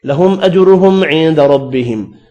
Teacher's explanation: دو میم ہیں، دونوں پر اظہار ہوگا، جیم ساکن پر قلقلہ ہوگا